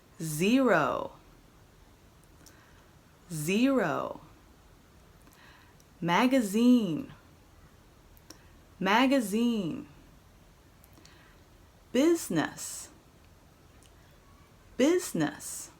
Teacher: when you make the z sound you should feel a vibration in your jaw